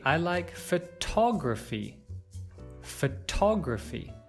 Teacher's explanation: Notice how the word stress here has changed. From stressing the first syllable, we're now stressing the second.